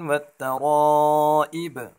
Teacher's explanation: با میں کلکلا کریں گے وقفن میں